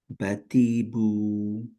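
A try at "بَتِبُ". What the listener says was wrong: টিতে টান হয়ে যাচ্ছে। বাতিবু।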